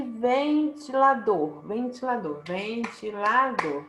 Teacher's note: ventilador é oxítona porque dor é a sílaba tônica é a última